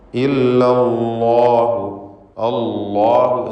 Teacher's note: അള്ളാഹു എന്ന ഇസ്മുൽ ജലാല, ഇതിലുള്ള ലാമിനെ തടിപ്പിച്ച് തന്നെയാണ് ഉച്ചരിക്കുക. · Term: തഫ്ഖീം